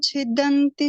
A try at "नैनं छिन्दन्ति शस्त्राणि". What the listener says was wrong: छिन्दन्ति बोलो, छिन्दन्ति आधा है ना।